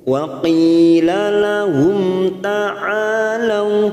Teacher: mim sukun bertemu ta idhar safawi kita baca jelas tanpa mendengung